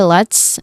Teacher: You end with a hissing sound, okay? And then in go, there's clearly a diphthong here.